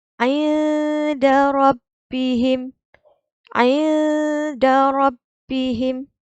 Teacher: Bunyi juga nun sukun tu. Tapi dia dengung sikit. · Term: ikhfa hakiki